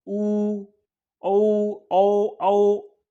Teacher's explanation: जिन स्वरों के उच्चारण में ओष्ठ गोलाकार हो जाता हो, मतलब होठ जो है आपके गोलाकार हो जाते हो।